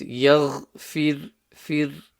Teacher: So the ghain needs to be clear. The ra is empty mouth because it has a kasra before it.